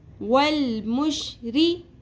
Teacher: ری باریک رکھنا ہے، را کے نیچے زیر ہے